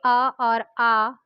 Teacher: यहाँ पर अ और आ का जो उच्चारण स्थान है वो है कंठ है।